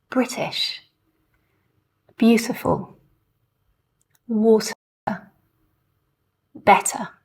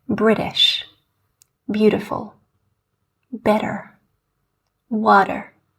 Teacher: what is quite unique to the standard Southern British accent is that we pronounce this true T sound before a vowel sound within a word